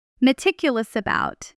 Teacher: In fast natural speech, meticulous about often blends the s of meticulous directly into the a of about. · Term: connected speech